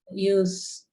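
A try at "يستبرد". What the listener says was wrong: Yas. yu itu 4 huruf. Ini kan 6 nih. Jadi harus pakai ya. yastab, ridu. ya sebelum akhir kasro.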